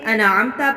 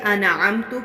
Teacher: حروف انعامتا پر تا پر زبر ہے، جبکہ اکثر لوگ تا پر پیش پڑھ کے انعامتو پڑھ دیتے ہیں